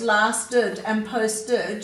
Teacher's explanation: in these words, lasted and posted, you're hearing the ED making its id sound